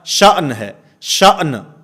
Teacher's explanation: اس بات کا خاص خیال رکھنا ہے کہ دونوں حروف کی آواز پیدا ہو، جیسے میں نے مثال کے طور پہ عرض کیا، شأن ہے، شأن، حمزہ کی آواز بھی آئے، نون کی آواز بھی آئے، اس طرح نہیں کہ حمزہ کی آواز تو آتی ہے اور نون کی آواز ختم ہو جائے